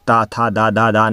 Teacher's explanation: ये आपके दंत से निकलते हैं